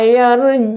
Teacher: Ain itu adalah wastul halki